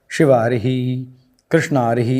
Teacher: जैसे उदाहरण के लिए हम स्लाइड में पुनः देखें तो शिव अरिही, यहाँ पर ह्रस्व अ है, ह्रस्व अ है, तो ह्रस्व अ और ह्रस्व अ मिलकर के बन गया दीर्घ आ